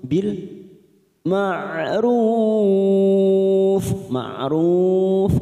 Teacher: karena kita wakaf di sini kita panjangkan empat harakat